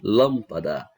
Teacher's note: Então, se ela tem 3 sílabas, ela é uma palavra trissílaba. Em relação à sílaba tônica, a sílaba mais forte dela é o lam · A sílaba que é pronunciada com mais força é a antepenúltima. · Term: proparoxítona